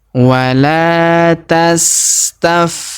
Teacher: Huruf la kita panjangkan 2 harokat karena terdapat alif di depannya.